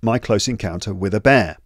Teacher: notice how each chunk is pronounced without gaps or pauses between the words in each chunk